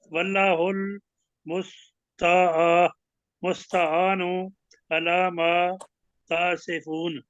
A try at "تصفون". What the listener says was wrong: تا نہیں ہے، تصفون۔